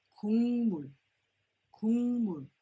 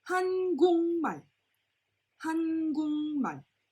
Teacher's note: so the G at the bottom becomes an NG sound